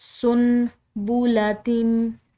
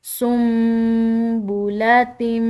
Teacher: تو یہاں پر ہم نے نون کی بجائے میم ادا کرنی ہے. اس کو سن بولاتم اس طرح کر کے پڑھیں گے تو یہ غلط ہوگا، بلکہ ہم اس کو پڑھیں گے سم بولاتم.